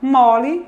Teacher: No radical a gente tem esse O, que é médio-baixo